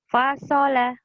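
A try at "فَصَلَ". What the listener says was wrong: Faso, jangan fasola. Itu mah ada tasdidnya. Fasola, datar aja.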